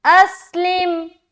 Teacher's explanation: اور حمزہ کو جب سین سے ملائیں گے سیٹی کی آواز ظاہر ہوگی